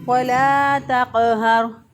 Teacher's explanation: ہا جو ہے یہ حروف حلقی میں سے ہے اور یہ اقصی حلق میں سے ادا ہوتا ہے ، یعنی سینے کا وہ گلے کا وہ حصہ جو کہ